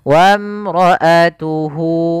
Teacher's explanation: Itu ada hak dhamir, yaitu menunjukkan kata ganti, kemudian bertemu dengan huruf waw kecil setelahnya, kita panjangkan 2 harakat untuk mad silah qasirahnya